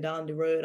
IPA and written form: dɑːn di rɵːd (down the road)